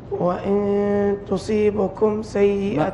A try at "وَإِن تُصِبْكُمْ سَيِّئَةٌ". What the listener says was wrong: ما فيها بعد الصاد باء ساكن تصيبكم